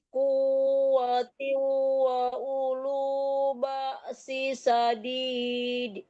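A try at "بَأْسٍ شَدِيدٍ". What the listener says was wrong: Wa ulu ba'sin disamarkan ke shin ya, dengung ya. Wa ulu ba'sin syadidin wal amru ilaik.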